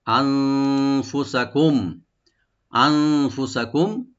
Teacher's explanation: আন হামজাকে right দিয়ে নুন সাকিনকে আমরা এখানে একফা করব, লাইট গুন্না, ফুসাকুম, আর মিম সাকিনকে আমরা থেমে যাব, আবার এখানে এজাহার হবে, এজাহার করে বা স্পষ্টভাবে পরে আমরা থেমে যাব নরমালি।